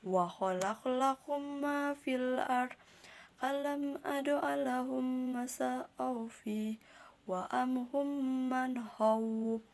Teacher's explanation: mim sukun diidghamkan dan disertai gunnah dan ditahan 2 harokat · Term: idgham mislain